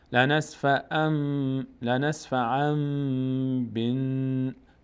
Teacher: به جای نون میم تلفظ میکنیم. لنسفعا بن، به میچسبه به نون الف خوانده نمیشه، لام هم همینطور.